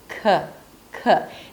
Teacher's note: A k sound is also aspirated at the beginning of a word, so there is a little h after.